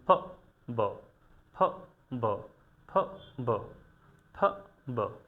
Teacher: আমাদের দুইটা ঠোঁটকে আমরা একসাথে করে সাউন্ড বের করে দিব। অর্থাৎ এই দুইটা সাউন্ডের ক্ষেত্রে আমরা মূলত আমাদের যে দুই ঠোঁট রয়েছে এটাকে একসাথে করে আমরা সাউন্ডটাকে বের করে দিব, যেমন ফ ব, ফ ব, ফ ব, ফ ব।